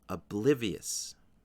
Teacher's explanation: The stress is on the second syllable, and there's also a little bit of a stress on the final syllable.